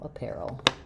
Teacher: So in apparel, our stress is on the pair syllable, and letters AR here say the air diphthong, like in pair, like a pair of shoes.